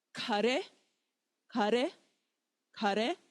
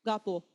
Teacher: Again, if we take our tissue, kare, kare, kare, little flutter, ga, bo, nothing, ga, ga, ga, no flutter at all